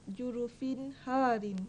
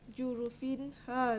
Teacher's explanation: hendaklah dinyatakan dan diterangkan bunyi baris dua tanpa dengung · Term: izhar